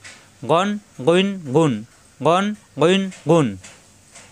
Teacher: গঞ্জিজের গইন, গঞ্জি পেশ গুণ, কণ্ঠনালীর শেষ অংশ থেকে উচ্চারণ।